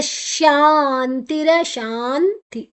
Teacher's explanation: ಶಾದ ನಂತರ ಅನುಸ್ವರದ ಉಚ್ಚಾರಣೆ ನ, ಮುಂದಿನ ಅಕ್ಷರ ತಾ ಇದೆ